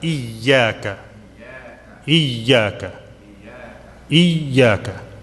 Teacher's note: Little bit stress on the ya because it has a shadda